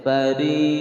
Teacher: Fari fa ada desisan angin fa. Fari ra tarkik karena ra berharokat kasrah. Ri dibaca panjang karena di sini ada ya sukun sebelumnya kasrah.